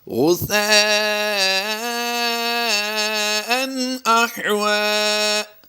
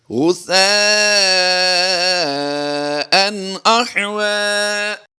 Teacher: یہاں پر ہم اظہار کرتے ہوئے غنہ نہیں کریں گے بلکہ غنہ کرنے سے اجتناب کریں گے۔